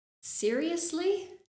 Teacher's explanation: notice that Rising intonation with that phrase